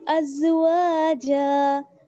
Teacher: واو الف زبر ہوا, واو کے ساتھ الف مدہ ہے اس لیے اس کو تھوڑا سا کھینچیں گے